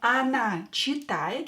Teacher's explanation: O will be pronounced as A because it's not stressed.